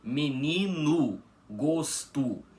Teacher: nessas duas palavras o o final fica com som de u